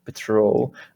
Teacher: And also, I guess because it's a verb is most likely in English, the stress is on the second syllable · the stress is on the second syllable, patrol